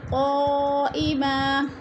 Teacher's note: قا میں مد متصل ہے، 4 الفی مد ہے، 4 الف کے برابر ہم نے اس کو پھر کھینچ کر پڑھنا ہے